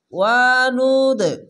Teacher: এখানে কলকলা ধাক্কা মেরে নিচে সাউন্ড আসবে।